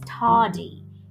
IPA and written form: ˈtɑːdi (Tardy)